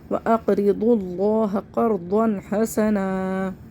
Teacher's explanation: وقف کی صورت میں اس کو ایک الف برابر کھینچ کے پڑھ لیں گے